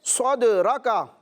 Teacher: دال میں اس طرح آواز نکال رہا ہوں کہ آواز لوٹتی ہوئی معلوم ہو رہی ہے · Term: قلقلہ